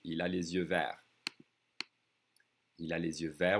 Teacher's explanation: We don't hear the T and the S. · I'm connecting that S with the vowel sound, with the Z sound. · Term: liaison